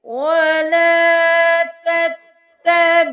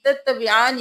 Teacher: یہاں سے دیکھیے، وَلَا تَتَّبِعَانِّ، تَتَّبِعَانِ نہیں کرنا، غنہ کرتے ہوئے ہم نے نون کو 2 بار ادا کرنا ہے